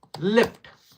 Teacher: after l sound there is e sound for short duration